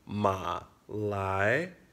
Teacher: third tone followed by a second tone ma lie so remember third tones are short and they're that bass voice